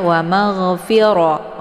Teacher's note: rummi jadi sama-sama dibaca dengung ya dan untuk hukum bacaan rnya dibaca tebal dengan posisi pangkal lidah terangkat ke langit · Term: ro-nya dibaca tebal